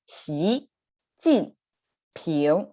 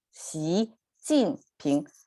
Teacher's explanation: So it's rising, falling, rising, Xi Jin Ping.